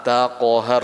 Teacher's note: Jadi ko-nya tebal, ro-nya tebal juga.